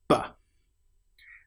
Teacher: The sound B is created with your lips fully together, not half together, not V, but B. And that sound is a clear B popping sound.